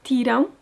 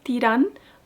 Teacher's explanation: in Portuguese, you hear a soft nasal sound whereas in Spanish it's a distinct N.